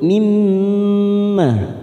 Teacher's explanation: mim yang bertasdid bertemu mim yang bertasdid, kita tekan 3 ketuk mimmah, namanya bacaan gunnah.